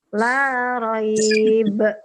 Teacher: Wusta itu tengah. Qalqalah tengah itu kalau dia di akhir ada tanda waqaf seperti tadi contohnya la raib. Nah, itu mantulnya agak keras. La raib. Nah, itu ada kayak K ya di dalamnya. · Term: qalqalah wusta